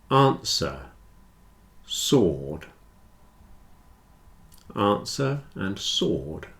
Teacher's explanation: Answer and sword have no W.